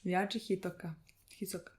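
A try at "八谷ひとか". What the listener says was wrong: I just, the S is a T. Sure, but it sounds even more similar to Hisoka.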